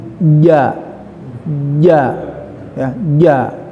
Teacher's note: tempat keluarnya huruf ja ya, yaitu keluar dari tengah-tengah lidah ya, bertemu dengan langit-langit atas. Jadi tengah-tengah lidah ya, bertemu dengan langit-langit atas.